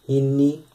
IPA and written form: h|(i)nːi ((h)inni)